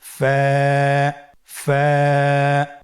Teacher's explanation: ফা, স্ক্রিনে দেখতে পাচ্ছেন ফায়ের মাখরাজ। ফায়ের মাখরাজ হলো নিচের ঠোঁটের প্যাড সামনের উপরের দুই দাঁতের আগার সঙ্গে লাগিয়ে উচ্চারিত হয়।